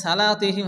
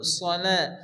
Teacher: সদ জবর সদকে মোটা করে উচ্চারণ করতে হবে সলা লাম মানে জবর লা একালিফি পরিমাণ চার দিয়ে